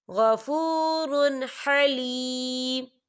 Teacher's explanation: ہم یہاں اظہار کریں گے، ہم غنہ بالکل نہیں کریں گے